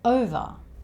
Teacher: Over has the schwa sound at the end.